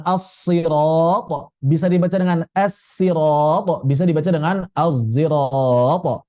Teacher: huruf shad pada kata sirat atau asirat bisa dibaca dengan tiga cara shad, sin, dan shad yang bercampur zai. Istilahnya asod almusyammata bizzai atau ismami shaodi zayya.